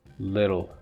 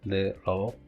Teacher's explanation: Little, this is a tapped t